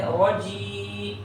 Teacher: اور جیم پر زیر ہے، اس کے بعد یا ہے، تو یا سے پہلے، یا ساکنہ سے پہلے زیر ہو تو اسے یا مدہ کہتے ہیں، تو یا مدہ کو ایک الف کے برابر کھینچ کے پڑھیں گے